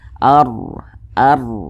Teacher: tanda baca fathah ini huruf ro memiliki tanda baca fathah nih maka huruf ro dibaca tebal dibaca tafkhim sehingga pangkalisan kita itu naik terangkat ke atas ketika Kita mengucapkannya